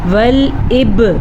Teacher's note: با پہ کلکلہ بھی کرنا آپ نے کیونکہ با حروف کلکلہ میں شامل ہے